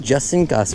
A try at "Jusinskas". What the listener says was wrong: Oh, the J is silent. The J is silent. Jusinskas.